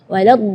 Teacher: huruf dhad itu keluarnya dari pinggir lidah maupun yang kanan ataupun yang kiri atau dua-duanya